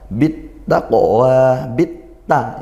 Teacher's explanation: Nah kita dengar dia tidak terbunyikan huruf lamnya maka ini lam takrifnya hukumnya idgham masuk langsung ke huruf ta · Amara hamzahnya kuatkan, ra fathah tafkhim ya dibaca tebal, bit taqwa, bit ta ini idgham syamsiyah. Nah, kita dengar dia tidak terbunyikan huruf lamnya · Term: Idgham Syamsiah